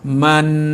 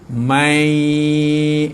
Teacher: Kalau dia masuk nun mati atau tanwin pada huruf ya, man, jadi mai, itu memasukkan bunyi nun mati atau tanwin ke dalam huruf-huruf idgham. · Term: idgham ma'al gunnah